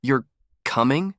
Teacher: That rising tone turns it into a question.